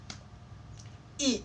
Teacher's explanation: Vokal depan tinggi dan tidak bundar. Maksudnya tidak bundar itu tidak seperti mengatakan atau mengucapkan vokal O.